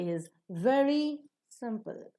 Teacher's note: Simple will take the falling tone because the sentence is ending with a full stop.